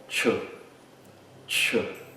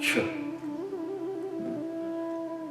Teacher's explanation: Em sânscrito, essa transliteração corresponde ao som Ch, Ch. Então é como se fosse um T e um CH, Ch. E, por exemplo, na palavra chakra, ela é escrita na transliteração internacional como C-A-K-R-A.